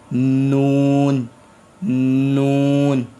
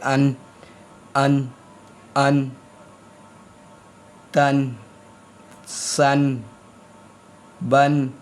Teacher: जब मेरी जुबान का कोना मेरे दांतों के मसूड़ों से लग रहा है तो ये नून अदा हो रहा है